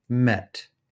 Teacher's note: the mid, front, lax, unrounded E vowel, as in met.